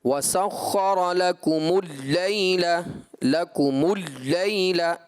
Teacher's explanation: لام کو آپ صفت توسط کی جگہ صفت شدت سے پڑھ گئے، یعنی کہ یوں آپ نے پڑھا وَسَخَّرَ لَكُمُ اللَّيْلَ لَكُمُ اللَّيْلَ، لام کو ایسا لگا جیسے آپ شدت کے ساتھ پڑھیں، جبکہ اس کو توسط والے انداز پر پڑھیں گے، اس میں جھٹکا نہیں ہوگا، نہ ہی اس میں شدت آئے گی۔